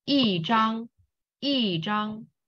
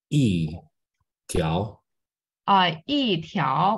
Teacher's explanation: So if follow E, if follow this 汉 字 E, right, is first tone, second tones, and third tones. You need to change E from first tone to fourth tone.